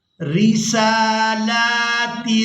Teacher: را کو باریک ادا کیا جائے گا کیونکہ یہاں پر را کے نیچے زیر ہے،